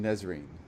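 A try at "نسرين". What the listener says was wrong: No, it's neither. it, you have to stress on the S. Nisreen.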